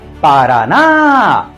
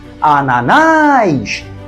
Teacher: tem três sílabas e a mais forte é a última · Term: oxítona